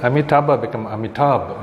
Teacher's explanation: So they drop off the last vowel. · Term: apocope